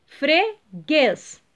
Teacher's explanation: o guês é última sílaba tônica